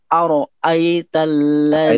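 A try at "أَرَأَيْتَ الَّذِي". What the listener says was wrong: Itu dijeda. Jadi jangan ara'aita. Langsungin ara'aita. Di bagian ro-nya jangan berhenti, Pak. Jangan ara'aita. Karena ara'aita itu satu kata. Nggak bisa dipisah. Ara'aita.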